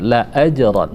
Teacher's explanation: la ajran ada jim, ketika dia sukun atau mati maka berlakulah hukum qalqalah sugra, namanya sugra, saghir, kecil.